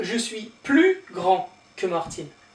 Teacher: because I'm a man, it's grand, and you don't pronounce the D here